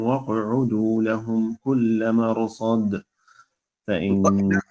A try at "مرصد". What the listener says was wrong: انتبه لا تقلقل ما مرصد ما تقلقل الراء